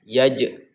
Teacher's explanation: jadi membacanya itu harus dipantulkan, qalqalah subro namanya. Mengenai qalqalah subro itu syaratnya huruf qalqalah disukunkan di tengah-tengah kalimat ya, di tengah ayat.